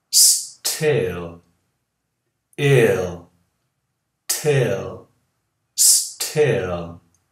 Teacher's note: a ponta da língua no L, no céu da boca